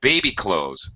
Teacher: we pronounce it like a compound noun, like baseball, airplane, notebook, high, low, with the syllables, one high and the next one low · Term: stress pattern for compound noun